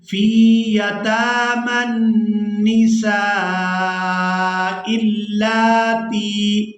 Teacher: لام کو کھڑی زبر کی وجہ سے کھینچ کر ادا کریں گے، تا کو یا مدہ کے ساتھ ملاتے ہوئے کھینچ کر ادا کریں گے۔